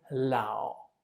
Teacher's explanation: that we call we just use half of it we put we just pronounce half of the third tone meaning i let my voice die and it never it never recovers it's just dead